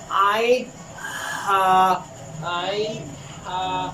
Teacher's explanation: حلق کے درمیانی حصے سے عین اور ہا ادا ہوتا ہے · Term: وسط حلق